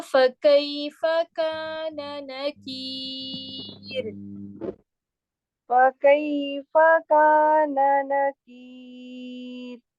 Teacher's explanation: وقفاً جو ہے یہ را باریک ہوگا آپ کا، ٹھیک ہے، لائٹ پڑھا جائے گا